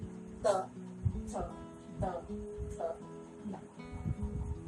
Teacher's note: त वर्ग में जीभ का अग्रभाग हमारे दांतों से टकराता है